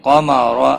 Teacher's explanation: قاف اور را دونوں پور پڑھے جائیں گے۔